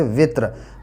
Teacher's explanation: रा साकिन से पहले वाला हर्फ भी साकिन है और उससे पहले ज़ेर है इसलिए ये रा बारीक पढ़ी जाएगी।